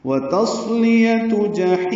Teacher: جحیم میں ہا وسط حلق سے ادا کرتے ہوئے لمبا کریں گے وقفاً ، مد عارض للسکون ہے۔ اور دوزخ میں جلانا ہے